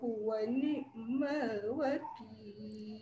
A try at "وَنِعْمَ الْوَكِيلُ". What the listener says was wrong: Pastikan ain tu dia dihidupkan, dia ada dia suara ada tapi dia tak sempurna bunyi mati ain tu. Jangan wani, dia jangan potong terus.